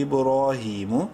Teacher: کھڑی زیر کی وجہ سے ہا کو بھی ایک الف برابر لمبا کریں گے